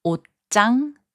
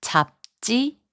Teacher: 지읒 changes its sound to 쌍지읒. 옷장, which means closet, is pronounced as 옷장. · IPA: [옷짱]